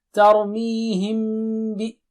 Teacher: تور نہیں، تر می مد ہے، می ہم، میم جو ہے چھپائیں گے، بے آ رہا ہے سامنے، غنہ کریں گے